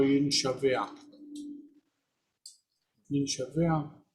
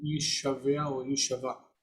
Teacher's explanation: But the noon disappears and assimilates